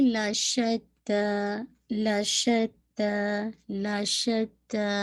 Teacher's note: شین پہ آپ کی تفشی ہے، آواز پھیلے گی